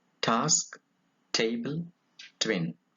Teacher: it is a voiceless alveolar